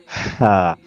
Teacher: the letter ha comes from the middle part of the throat. So we allow, we expel a lungs full.